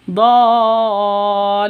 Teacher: lu panjang 2 ketukan karena ada waw mati diawali dengan dhammah. Waw mati sebelumnya dhammah, panjang 2 ketukan mad asli.